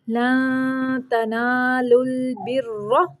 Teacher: لن پہ اخفاء کا قاعدہ ہے اور را کو موٹا پڑھیں گے۔